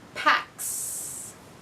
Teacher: Pack ends with k, a voiceless sound, so I'm going to add s.